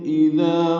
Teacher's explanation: اذا میں دال نرمی سے پڑھا جائے گا، اور اذا الف مدہ ہے، دو حرکات لمبا ہے۔